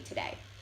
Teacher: In the word today, Standard English speakers put the emphasis on the end of the word, and in Chicano English, the emphasis is on the beginning of the word.